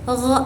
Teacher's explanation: Suaranya ini berat dan bergesekan. Nah, dia juga memiliki sifat yang majhur. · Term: huruf g